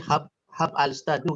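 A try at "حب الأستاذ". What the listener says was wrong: Ya, habil ustaz. Salah kecepatan. Habil ustaz. Kalau disambung.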